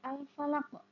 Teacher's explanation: Al-falaki jika diwakafkan atau berhenti maka dibaca al-falaq. Qaf jika mati atau disukun maka bacaan qalqalah. Ya, artinya bacanya harus memantul, dipantulkan.